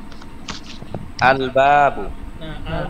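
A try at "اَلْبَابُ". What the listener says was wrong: আল বলি নাই, তিন আলিফ টান দিয়েছি এখানে। এখানে প্রশ্ন হচ্ছে এখানে টান কেন হলো? টান কেন হলো এটা দেখানোর জন্য একটা টেবিল বসানো হয়েছে পাশে, বাম পাশে দেখতে পাচ্ছেন। আলিফ প্লাস আলিফ সমান সমান আ।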